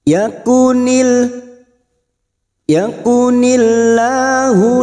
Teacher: lam jalalah yang didahului kasrah kita baca tipis atau tarkik